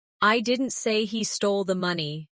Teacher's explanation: the stress is on I, meaning maybe someone else said it